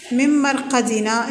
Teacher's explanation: النون مع الميم بغنة